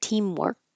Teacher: If I just pronounce this word by itself, you we won't hear that final K. I just hold it. Teamwork. Um, if there's a vowel after it now, you'll hear it connect.